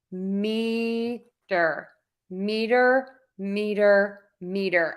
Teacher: Okay, so again, this is a little bit confusing, but when meter is the root word, the stress is going to change, stay the same. Meter, meter, meter, meter. I'm stressing syllable one.